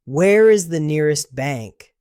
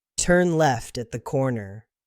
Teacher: Questions have a rising tone at the end. Statements have a falling tone.